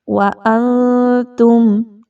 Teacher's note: وَأَنتُمْ، نون ساکن کے بعد تا کا حرف آ گیا، یہاں پر اخفا کیا جائے گا، نون کی آواز کو تھوڑا مخفی کر کے پڑھیے، کلیئر نہیں پڑھنا